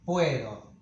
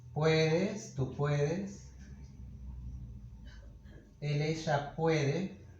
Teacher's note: So when the stress is in the root, this o will become we, a diphthong. When it's not stressed, it'll be always o.